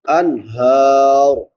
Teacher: نون ساکن پہ اظہار ہوگا کیونکہ بعد میں حروف حلقی میں سے ہا ہے